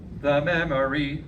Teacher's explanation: I'd like it to be the memory, with an unaccented schwa syllable.